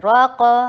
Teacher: را کے اوپر فتحہ ہیوی کیجیے را کو، اور قاف کے اوپر قلقلہ کیجیے اور قاف کو ہیوی کیجیے